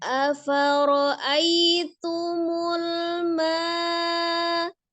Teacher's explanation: Selanjutnya afara'aitumul ma, ya, ada ai, ada ya sukun sebelumnya fathah di huruf hamzah, maka menjadi madlin ya, tidak panjang